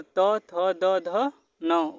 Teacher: अब बात करते हैं जीभ का अग्रभाग, दांतों से जो स्पर्श करता है।